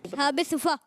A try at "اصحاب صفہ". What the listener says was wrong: جی، اصحاب صوفہ نہیں، صفہ، صوفہ، صوفہ نہیں، صوفہ تو وہ بیٹھنے کا ہوتا ہے صوفہ، تو اصحاب صفہ، ٹھیک ہے جی.